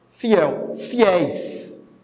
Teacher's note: A última sílaba é tônica. Então, você tem aqui a justificativa para a acentuação dessa palavra.